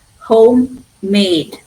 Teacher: Can you see my voice going a little higher, little longer? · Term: primary stress